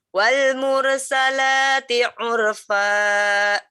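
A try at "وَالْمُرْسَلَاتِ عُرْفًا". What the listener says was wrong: Ini kayak ada hamzahnya ya belakangnya. Coba lebih dibuka sedikit lagi biar enggak ada hamzahnya.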